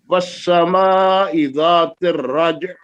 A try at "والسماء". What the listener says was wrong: یہ مد کریں لمبی. والسماء، لمبی مد کریں.